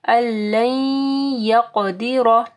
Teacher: قاف کو موٹا پڑھنا ہے اور قاف کے اوپر قلقلہ بھی کرنا ہے · اللین یقدر، پھر یہاں پہ بھی دیکھیں ادغام آ رہا ہے، نون ساکن کے بعد یا ہے، غنہ کے ساتھ آ رہا ہے